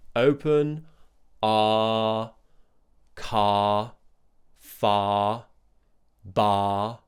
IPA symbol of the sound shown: ɑː